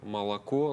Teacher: обычная безударная «а», которая редуцируется по-русски, ведь в русском языке мы говорим, например, «молоко», да, хотя пишем «молоко».